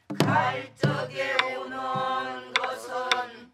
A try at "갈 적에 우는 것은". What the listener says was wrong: 애가 짧어 저게가 왜냐면 한 박자 갖고 쪼갰어 둘로 정확하게 쪼개서